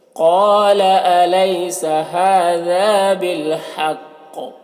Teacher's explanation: ذال میں الف مدہ ہے، اسے ایک الف کے برابر کھینچیں گے۔ بالحق، قاف کو پر پڑھیں گے اور یہاں پر وقف کریں گے تو قلقلہ بھی ہوگا